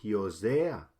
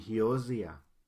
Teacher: se cambia el acento a la segunda parte de la palabra